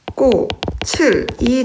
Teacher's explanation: 이 치읓이 그대로 올라가야 됩니다. 왜냐면 뒤에가 모음으로 시작하는 형식 형태소 아니겠습니까?